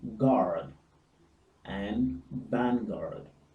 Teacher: Always note the R is pronounced in the American English.